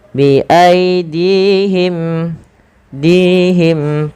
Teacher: Panjangkan dinya dua harakat karena di sini ada ya kecil